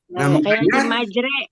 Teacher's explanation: Dari a jadi e miring. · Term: imalah